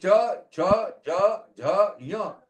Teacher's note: If you put it one after another, one ahead of the other, say cha, cha, ja, jha, nya, the contact between the palate and the tongue will go on reducing.